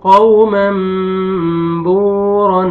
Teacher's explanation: واو سکون سے پہلے ضمہ، واو مد ہے، با کو آپ نے کھینچنا ہے · واو لین ہے، واو سکون سے پہلے فتحہ، قاف کو آپ نے نرمی سے ادا کرنا ہے